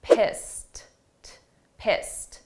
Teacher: Let's look at the pronunciation of pissed, because here this is an ED, a past simple verb, but the sound of that ED is a very soft T, pissed, pissed.